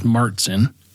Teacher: in the United States, it's often pronounced as Martzen with a hard T sound